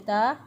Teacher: अलिफ मद्दा है, एक अलिफ के बराबर लंबा करेंगे। एक अलिफ के बराबर इसको लंबा किया।